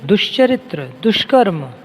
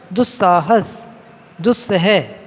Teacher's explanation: दुस में दुष शा, ये आपका शा तालव्य भी बन रहा है, और दुस में सा दंती सा भी बन रहा है